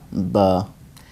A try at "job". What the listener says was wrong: I'm hearing b, which is adding an extra sound to the b. The b wants to sound like b. Job.